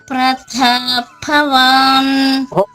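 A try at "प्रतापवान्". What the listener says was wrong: అంత నొక్కి చెప్పక్కర్లేదమ్మా, తేలికగానే ప్రతాపవాన్. ప్రతాపవాన్ అది వద్దు, అవి ఎక్కడుంటే అక్కడే చెప్పాలి, లేని చోట పలికితే బాగుండదు.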